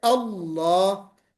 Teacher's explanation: لام مفخمہ یعنی لام کو موٹا کرتے ہیں، اللہ، تو یہ بھی حروف فرعی میں آتا ہے.